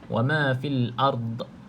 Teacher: Sisi lidah kiri ataupun kanan kita kena pada gigi garham bahagian atas kiri kanan tu tak kisah ikut keselesaan ataupun kebiasaan masing-masinglah untuk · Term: huruf dad